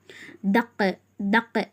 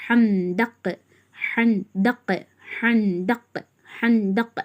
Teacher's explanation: காப் கல்கலா plus உருப்பே முஸ்தாலியா தடிமனாகவும் ஓதணும் கல்கலாவும் செய்யணும்